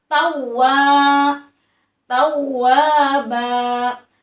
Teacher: Ka mad tabi'i harus dibaca panjang dua harokat, sebabnya karena ada alif sebelumnya didahului oleh huruf yang berharokat fathah. Kana tau, wa-nya ditahan dulu, ditekan, wa-nya double jadi tawwa karena bertasydid ya. Tawwa. Mad tabi'i juga dua harokat, tawwa.